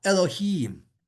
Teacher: the chirik with the yud, which is known as a chirik gadol because you're extending it · in Hebrew, it's accented at the end of the word